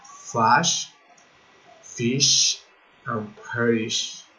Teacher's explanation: and the sound is sh, without voice